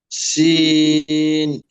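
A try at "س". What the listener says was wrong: শিন হয়ে গেছে, চিকন আওয়াজ হবে। সিন।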